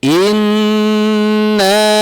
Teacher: Didengungkan selama 2 harokat. Harus sampai masuk ke rongga hidung. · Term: gunnah